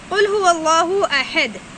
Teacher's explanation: هو اللہ میں چھوٹی ہا ہے، سینے کی طرف سے ادا ہوتی ہے